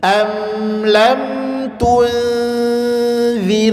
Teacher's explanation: Nun sukun ketemu za, dan za itu huruf tipis, maka dengungnya tipis atau senyum. Am lam tunzirhum, tipis. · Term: ikhfa